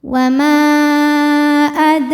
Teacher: Ra dibunyikan secara tafkhim karena berharokat fathah, maka dibacanya tebal. · sukun asli dan ada di tengah bacaan. Dibacanya dipantulkan dengan pantulan yang kecil. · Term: Qalqalah Sugra